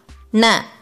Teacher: Your tip of your tongue touches the middle roof of your mouth. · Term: big na